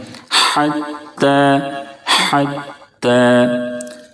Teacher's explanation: حتی بڑی ہا ہے، اس کو درمیانی حلق سے بالکل صاف آواز کے ساتھ پڑھیں گے